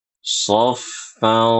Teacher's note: Nah, Ibu makhrajnya udah bagus ya. Tapi harusnya suara ikhfa dan gunahnya tebal.